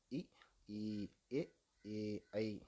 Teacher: அப்போ வாய் திறக்கிறதோடு மட்டும் இல்லாமல் மேல்வாய் பல்லை அடிநாக்கினடியில் ஓரங்கள் தொடுவதால், அதாவது நாக்கினடியில் ஓரங்கள் தொடுவதால் இது பிறக்கிறது